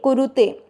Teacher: कुरु दोनों मात्रा छोटी लंबा नहीं खींचना और कुरु के साथ में ते कुरुते।